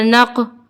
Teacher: ہماری آواز پلٹ کر آئے گی کیونکہ قاف جو ہے حروف قلقلہ کا حرف ہے